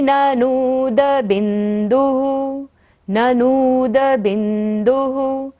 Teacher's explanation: ननूद को लंबा लेना है क्योंकि न के ऊपर बड़े उ की मात्रा है। और बिंदुः, बिंदु पर विसर्ग है तो ओह करते हुए।